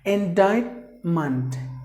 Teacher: the stress is here on the middle syllable